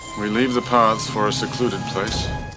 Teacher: His L's tend to be a bit dark and dental.